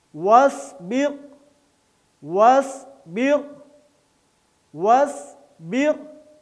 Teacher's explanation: اور صاد موٹا اور سیٹی کے ساتھ